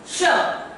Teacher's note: ये श जो है ये है आपका तालव्य श